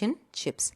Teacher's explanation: And is also shortened there. It simply becomes n. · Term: weak form